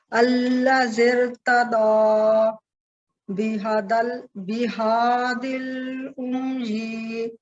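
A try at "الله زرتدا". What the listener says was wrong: اس کو لمبا نہیں کریں. بہادل.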